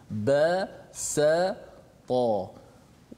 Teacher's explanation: Kalau katakan bila huruf ba bertemu dengan huruf tinggi, contoh basata, ba dengan sin tu kena bunyi rendah, bukan rendah suara tu slow, tidak. Pangkal lidah kita tak terangkat menyebabkan huruf tu nipis. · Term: istifal